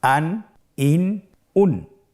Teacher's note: আপনারা দেখতে পাচ্ছেন যে প্রত্যেকটি উচ্চারণের শেষে দন্ত ন উচ্চারিত হচ্ছে, আন, ইন, উন।